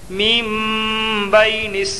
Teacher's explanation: یا لین کو نرم آواز کے ساتھ جلدی ادا کریں اور معروف پڑھیں